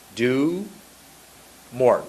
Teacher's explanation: Notice when I went do, I made a little W.